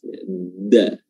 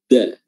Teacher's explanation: Wa idzal ardu muddat, ya, huruf dal makhrajnya adalah ujung lidah bertemu dengan pangkal gigi seri atas